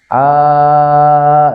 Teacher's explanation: keluarnya itu dari jauh rongga mulut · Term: Alif